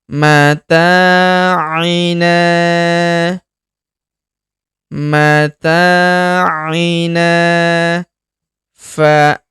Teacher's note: huruf na kita panjangkan dua harakat karena terdapat alif di depannya